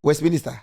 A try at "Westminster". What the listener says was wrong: You said Westminsta. Why you chewing the Why you chewing the words?